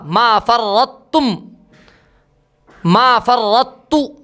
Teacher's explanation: یہ چاروں کلمات ایسے ہیں جن میں ادغام ناقص ہوتا ہے، طا اور تا دونوں کا مخرج ادا ہوتا ہے